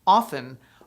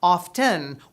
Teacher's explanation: Often, with the T silent, is considered the preferred and proper pronunciation, but often, with the audible T, is tolerated.